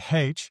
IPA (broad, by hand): heiʧ